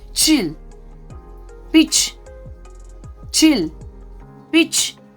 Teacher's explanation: मतलब च को जैसे कि ट और श के बीच में बोलना है